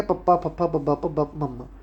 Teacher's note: ਹੋਠੀ ਸ਼ਬਦ ਉਹ ਹੁੰਦੇ ਆ ਕਿ ਜਦੋਂ ਆਪਾਂ ਸ਼ਬਦ ਬੋਲਦੇ ਤਾਂ ਆਪਣੇ ਦੋਨੇ ਬੁੱਲ ਹੁੰਦੇ ਜਿਹੜੇ ਉਹ ਇਕੱਠੇ ਮਤਲਬ ਮਿਚ ਕੇ ਆਂਸਰ ਦਿੰਦੇ · ਜਦੋਂ ਆਪਾਂ ਪੱਪਾ ਕਹਾਂਗੇ ਨਾ ਆਪਣੇ ਦੋਨੇ ਬੁੱਲ ਆਪਾਂ ਨੂੰ ਮਿਚਣੇ ਪੈਂਦੇ ਆ। ਪੱਪਾ, ਦੋਨੇ ਬੁੱਲਾਂ ਦਾ ਇਕੱਠਿਆਂ ਦਾ ਜ਼ੋਰ ਲੱਗਦਾ।